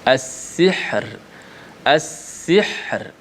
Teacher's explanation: Ra tu bila nak wakaf kena matilah. So ra tu dimatikan. Dimatikan dalam keadaan nipis jika sekiranya sebelumnya mati juga selain daripada ya. · Ra itu dinipiskan. As-sihr digetarkan, dibunyikan sifat ra itu ketika wakaf itu dalam keadaan bentuknya tarqi ataupun nipis.